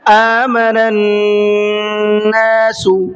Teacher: آمن الناس، یہاں نون کے اوپر تشدید ہے، تو نون میں تھوڑا سا غنہ کر کے پڑھیں گے، ناک میں آواز کو روک کر کے پڑھیں گے